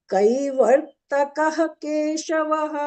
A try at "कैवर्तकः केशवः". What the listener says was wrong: कः न वक्तव्यं कः हाफ् का कैवर्तकः हाफ् हेच् वक्तव्यं हा कः हा कः हा हा